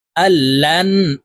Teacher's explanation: তাসদীদওয়ালা নুনের সাথে গুন্নার সহিত পড়ব, মাঝখানে জজমওয়ালা নুন বাদ পড়ে যাবে।